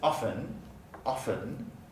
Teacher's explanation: in my dialect i don't pronounce the t